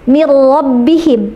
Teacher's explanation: halus gitu, ya, tidak kencang seperti ro-nya Indonesia. Karena R Indonesia itu kencang r gitu, ya. · nun sukun bertemu dengan huruf ro, maka suara nunnya hilang karena masuk ke dalam huruf ro, dan ini tanpa gunnah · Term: idgham bi ghairi gunnah